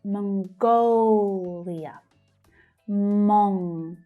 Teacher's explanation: So the second syllable there is stressed.